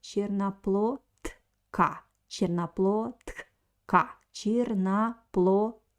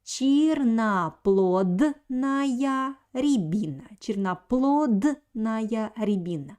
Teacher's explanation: And I want to pay your attention on the letter D. So here the letter D stands before voiceless consonant K. So it's a weak position for the letter D. That's why we write D, but pronounce it like T.